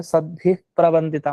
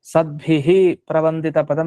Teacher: ಅರ್ಧ ವಿಸರ್ಗತರ ಹೇಳಬೇಕು ಪೂರ್ತಿ ವಿಸರ್ಗ ಹೇಳಬಾರದು